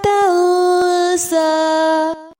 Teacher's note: نون ساکن کے بعد سین ہے، اخفا ہوگا